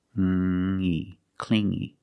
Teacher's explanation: you hear the sound only the nasal sound here no G not cing G but clean clingy clingy he was too clingy